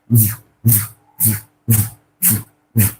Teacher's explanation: you'll notice that the vocal cord will vibrate which shows that this is voice come to this this sound